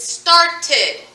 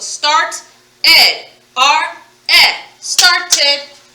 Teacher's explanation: when you hear the whole ed ed sound it is another vowel sound so you're creating another syllable so starts started you hear both letters the whole ed correct